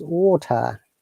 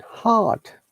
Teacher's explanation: in water, T is prominent and R is silent